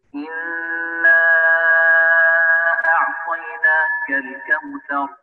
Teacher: He keeps the noon sound for a bit longer, and then he prolongs the inna because of madd saghir